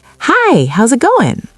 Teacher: In informal speech, we often extend that I sound to show we're genuinely happy to see the person.